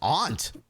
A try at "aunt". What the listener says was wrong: aunt. There's a U. There's a U, man. Pronounce the U. Enunciate.